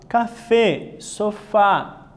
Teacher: Palavras agudas, ó, su sílaba tónica es la última. Son una minoría en español y las agudas son acentuadas cuando la sílaba fuerte termina en N, S o vocal.